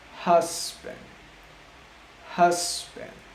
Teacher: the H is a voiceless sound, which means I'm not able to feel any vibration